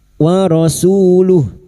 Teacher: damir yang berharakat panjang dan dibaca waqaf maka menjadi sukun